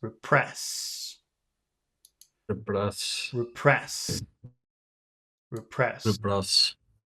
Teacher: So the accent is on press.